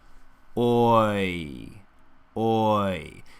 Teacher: Oi. And as the lips relax back, the tongue, which has started low, rises up in the center. So the tip stays low, but the center pushes up, the middle of the tongue. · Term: oi diphthong sound